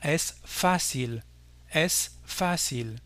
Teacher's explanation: On accentue la dernière. En espagnol, pas du tout, l'accent porte sur le A. Il faudra donc dire es fácil, es fácil. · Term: accent tonique